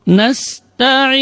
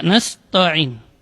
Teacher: Jadi tidak boleh ta ditebalkan karena ta termasuk huruf tarqiq, huruf yang tipis. Ta, ujung lidah berada di usul thanaya, di pangkal gigi seri atas. Dengan posisi lidah istifal, yaitu posisi lidahnya berada di bawah, tidak terangkat.